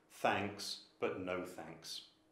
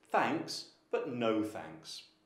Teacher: there is a rise fall intonation on the first thanks and then there's a quite a strong falling intonation on no